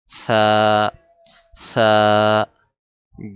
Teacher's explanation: জিহবার আগা সামনের উপরে দুই দাঁতের আগার সাথে লাগিয়ে উচ্চারণ করতে হবে।